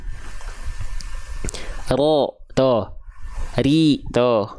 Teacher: Jadi bukan wajah rabbuka, enggak, tapi wajah ro. Jadi kalau dihitung-hitung tuh getarannya paling cuma 1 sampai 2 getaran. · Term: sifat bergetar